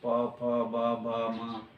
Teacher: यदि प कहें तो देखो ओठ दोनों सट जाएंगे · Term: पवर्ग